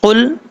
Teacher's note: قاف حروف مستعلیٰ میں سے ہے، پر پڑھا جائے گا۔ اس کا مخرج زبان کی جڑ اوپر والے تالو کے نرم حصے سے لگے تو قاف پڑھا جاتا ہے